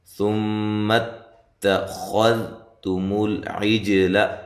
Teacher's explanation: یہاں خا کو موٹا کرنا ہے، تا کو باریک پڑھنا ہے، ذال کو بھی باریک پڑھنا ہے، اس کو ہلانا نہیں ہے۔